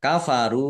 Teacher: rok domah wawu sukun mat tobi'i, panjang 2 harokat